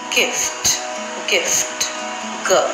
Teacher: This is an unaspirated sound, which means that the amount of breath that escapes from the mouth is almost negligible.